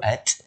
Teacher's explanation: Contoh saya sebut up, angin mana keluar lepas tu. Tapi kalau saya sebut at, ada angin halus yang keluar tu. Angin halus yang keluar tu lah sifat hams tu.